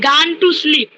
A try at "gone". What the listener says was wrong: আচ্ছা, গান হবে না, উচ্চারণটা গান গন হয়ে যাবে।